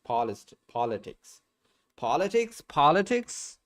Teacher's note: The first syllable is stressed